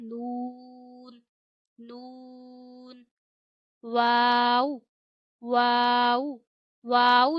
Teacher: दोनों होठों को गोल करके अदा किया जाता है।